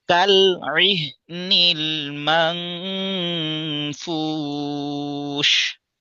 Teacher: আর এখানে আমরা নুন সাকিনের পর ফা পেয়েছি, অর্থাৎ ইখফা এর হরফ পেয়েছি। অর্থাৎ নুন সাকিনের পর যদি ফা আসে তাহলে তার একটা আওয়াজটা আমাদের নাকের ভিতর থেকে বের করতে হবে